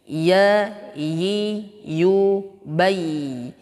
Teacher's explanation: Ya ini letaknya adalah di tengah lidah kita. Ma baina wastil lisani wa ma yuhazihi minal hanakil a'la. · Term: huruf ya